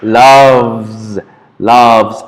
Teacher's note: So I love, he, she, and it loves, loves, and so on, guys. So remember, this termination or these endings go with a z, and these are voice sounds.